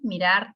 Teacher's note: mirar tiene dos sílabas, la sílaba tónica es rar. Por eso se le llama aguda, porque está en la última, la posición de la sílaba tónica en la última.